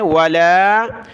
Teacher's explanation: لام کے اوپر مد ہے، اس کو ہم نے کھینچنا ہے